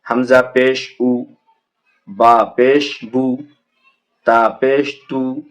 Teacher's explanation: पेश की आवाज़ आगे को जाती है और होठों के किनारे मिलते हैं और बीच का हिस्सा खुला रहता है